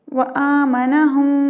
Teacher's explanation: وآمنہم مشدد میم ہے، مشدد میم پہ ہم غنہ کریں گے۔